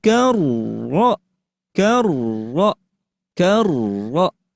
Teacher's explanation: Jadi tidak dibaca karo, tapi karro sambil rnya dibaca tebal.